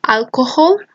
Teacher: this glottal is between voiced sounds